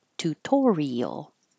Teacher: the I and the A going in separate syllables and being heard individually